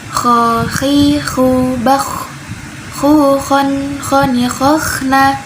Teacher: Kho ada di bagian ujung dan dia sifatnya hamesh atau mengalir nafasnya.